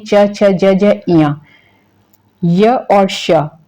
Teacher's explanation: नाम तालू में हर्ष ई दीर्घ इ च वर्ग ठीक है च वर्ग में जितने हो जाएंगे च छ ज ज य य और श इनका उच्चारण स्थान कहां से होगा तालू से होगा